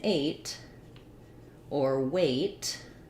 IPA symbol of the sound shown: eɪ